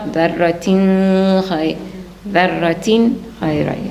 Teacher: So the ذرة خير, so that's clear, right? Because there's a throat letter after the tanween. There's no mixing, there's no ikhfa, there's no ghunna, it's just clear.